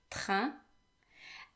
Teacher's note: the french r comes from the throat and it is pronounced as if you were gargling but without water um your the tip of your tongue needs to rest against